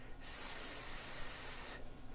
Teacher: S consonant, made with air going through your front teeth.